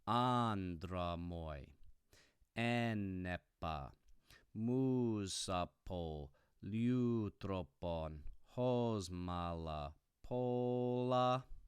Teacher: It's called dactylic hexameter because I just recited 1, 2, 3, 4, 5, 6. This example of a line happens to be a dactyl followed by a dactyl followed by a dactyl followed by a dactyl followed by a dactyl, and every line of dactylic hexameter ends with a spondy.